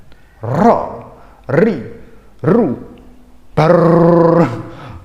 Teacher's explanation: Kalau ro itu ada getarannya. Ro, ri, ru. Tapi getarannya jangan terlalu berlebihan. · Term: huruf ro